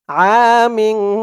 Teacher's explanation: ইকফা গুন্নাটা নাকের ভিতরে লুকিয়ে করতে হয়